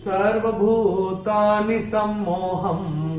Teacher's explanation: ह के ऊपर अनुस्वार चरण की समाप्ति पे आ रहा है, तो इसका उच्चारण केवल और केवल म ही होगा। सर्वभूतानि सम्मोहम्, ये ऐसे करके आएगा।